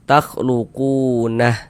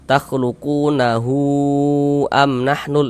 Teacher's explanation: Mad silah thawilah itu panjangnya 4 sampai dengan 5 harakat.